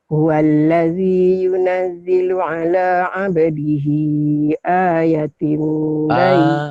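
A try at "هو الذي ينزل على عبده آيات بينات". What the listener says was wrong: panjang Makcik. Panjang sama.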